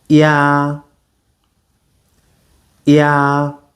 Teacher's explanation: So you notice that the emphasis is on the second sound, not the first. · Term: glide